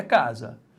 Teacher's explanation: Então a sílaba tônica é a penúltima. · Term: paroxítona